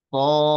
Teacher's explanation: Maka di sini karena dal sukun ini mempunyai sifat qalqalah, keluarkan suara qalqalahnya di akhir setelah memanjangkan panjang 6 harokat